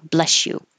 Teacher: When you say bless you after somebody sneezes, it's usually pretty quick and it sounds like bless you, because the S and the Y next to each other will make the sh sound, so it blends together and sounds like bless you, which I think also sounds like a sneeze.